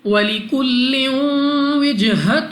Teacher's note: وَلِكُلٍّ لام کے نیچے 2 زیر، اور 2 زیر کی تنوین کے بعد واو حروف یرملون میں سے ہے، یہاں پہ ہم نے غنہ کر کے پڑھنا ہے